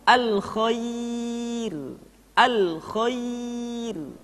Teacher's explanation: ro dibaca dengan tipis ketika didahului oleh huruf ya yang sukun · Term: ra dibaca tipis